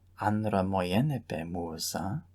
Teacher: The oi of moi gets shortened because it's followed by an epsilon. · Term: correption